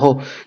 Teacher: एक ऐसा व्यंजन है जो सघोष भी होता है, महाप्राण भी होता है, ओष्ठ भी होता है